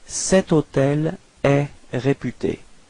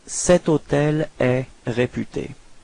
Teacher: even if hôtel is starting with H, H is actually not pronounced, so the first sound of the word is O, so it does mean that it's a vowel, and in this case you will have to use set as well.